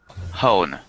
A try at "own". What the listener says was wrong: No, not with an H. There's no H there, so it's just own.